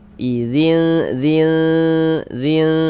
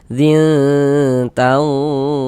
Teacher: di bagian zinnya itu suaranya itu kita tahan ya, kita panjangkan sejenak ya. Kira-kira sepanjang 2 harokat, kita gunahkan, kita dengungkan. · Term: ikhfa hakiki aqrab